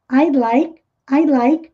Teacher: esse D fica quase imperceptível também, mas é sutil. I'd like, I'd, é só a posição aqui de fazer o som do D, I'd like, I'd like.